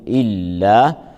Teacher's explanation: اللام هنا مرققة في إله، ترقق وترقق الألف بعدها، فنقول لا إله إلا. اللام مشددة، نضغط اللام لبيان تشديدها، فنقول إلا.